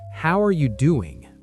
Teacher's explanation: The stress is on doing.